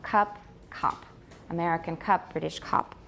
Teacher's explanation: uh has a very low position in comparison with most forms of American English